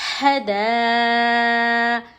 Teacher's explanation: حروف مدہ کے بعد حمزہ اسی کلمے میں ہو تو مد متصل ہوگا. اس کو 5 الف کے برابر کھینچیں گے